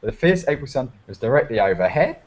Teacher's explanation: Australians always um go up at the end of sentences